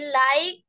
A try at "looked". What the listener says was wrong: এখানে দেখো ও আছে না, তাহলে উচ্চারণ কি হবে? রুসুকার দিয়ে হবে, looked.